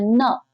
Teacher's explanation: आपका ना वर्ण का उच्चारण स्थान दांत और नासिका होता है। न, नाक और दांत दोनों का प्रयोग हो रहा है